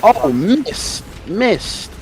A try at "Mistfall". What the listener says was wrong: Not Miss. Mist. Enunciate.